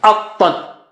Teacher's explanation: A is low and Ta is very thick and high.